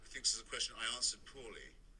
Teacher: There's that missing R. It's not missing, it's there. It's just the tongue is flatter.